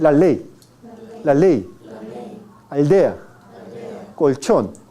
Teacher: cuando pronuncia usted la L de español, la lengua se mantiene en una posición relativamente alta. La lengua se eleva hacia arriba.